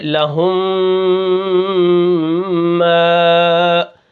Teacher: اب یہاں پر دیکھیں لہم، یہاں پر ہم نے سکون کر لیا، لیکن میم کے اوپر پھر زبر ہے، تشدید بھی ہے، اور تشدید بھی پیچھے والے حرف کے ساتھ مل کر پڑھی جاتی ہے، تو پچھلی میم کو جب دوسری میم میں ملائیں گے تو یہ کیا ہے؟ آپس میں مل کے ایک میم بن جائے گی، وہاں پر غنہ بھی کریں گے